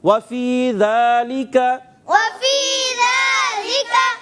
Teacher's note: زبان کو اٹھا کر اور سامنے والے اوپر کے دانتوں کے کناروں سے لگائیں گے تو زال ادا ہوگا